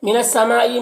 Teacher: مد متصل ہے، اسے 3-4 الف کے برابر کھینچ کر پڑھتے ہیں